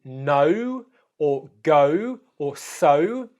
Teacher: This is a diphthong, which means that it's made of two vowel sounds that are put together to form a new vowel sound where you're actually transitioning as you make it. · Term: the O diphthong